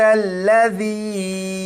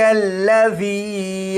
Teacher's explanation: جیسے یہاں پر دیکھیں، یہ ہے ذال، ذال کو نرمی سے پڑھا جاتا ہے یعنی سیٹی کی آواز کے بغیر۔